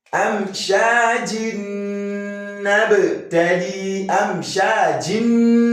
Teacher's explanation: You can see that nun that is carrying sukun is assimilated to the nun, the second nun that is carrying the vowel sound. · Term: idgham